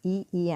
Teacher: రెండు దవడలకి మన నాలిక టచ్ అవుతుంది, ఇటు అటు, అందుకే అది తాలు